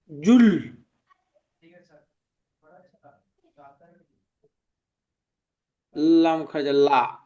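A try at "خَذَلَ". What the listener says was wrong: টান দিন, খাড়া যাবে তো, একালিপ টান হবে।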